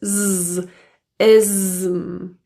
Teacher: the s in this word is also pronounced as a zed sound it's voiced